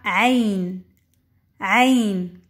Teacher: ha un suono gutturale che proviene dalla parte più profonda dalla gola